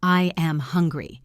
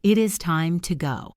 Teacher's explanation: Start normal and drop your pitch on the word hungry.